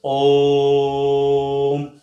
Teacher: ओम का उच्चारण करते करते क्या है कि हम उस स्वर को क्या करते हैं लंबा खींचते हैं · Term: प्लुत स्वर